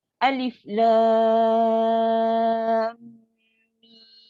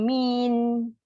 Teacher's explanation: Tu jadi nun. Ejaan huruf mim bukannya huruf nun, huruf mim, tutup mulut